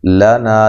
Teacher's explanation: لنا لام کو باریک پڑھنا ہے، نا الف مدہ ہے